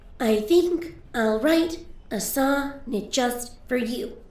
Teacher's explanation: it's just a pattern of 10 syllables per line alternating between unstressed and stressed beats